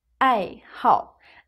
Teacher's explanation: Notice that here the character 好 has a fourth tone, a falling tone